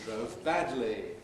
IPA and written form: ˈdrəʊv ˈbædli (drove badly)